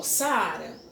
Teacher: ele tem o encontro de duas vogais pronunciadas em dois impulsos distintos, formando sílabas diferentes. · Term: hiato